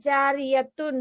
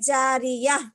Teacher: گول تا پر وقف کرنا ہو تو وہ ہائے ساکنہ بن جاتی ہے, جیسے جاریتن سے جاریہ.